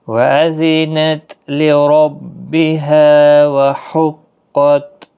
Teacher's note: ہا کا خاص خیال رکھیں، وسط حلق والا ہے